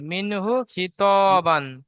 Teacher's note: তাই নুন সাকিনের আওয়াজকে বিনা গুণনাহে জাহির করে পড়তে হয়।